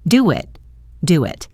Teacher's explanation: And notice the linking in do it. To make it sound smoother, we can add a very small W sound in between.